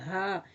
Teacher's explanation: حلق کا آخری حصہ جو سینے کی طرف ہے، سینے کے اندر سے آپ کو وائبریٹ محسوس ہوگی